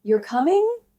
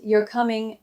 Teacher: If I say it with a rising tone, you're coming, I'm asking. But if I say it flat, you're coming, I might just be confirming something.